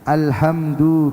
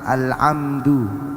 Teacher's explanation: alhamdu yang seharusnya dibaca ha tapi dibaca ain, al-amdu, karena ha dan ain ini satu makhraj